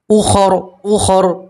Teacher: اور آگے اوپر وقف کریں گے تو جو زبر ہے اسے آپ جزم سے بدلیں گے، را کو موٹا پڑھیں گے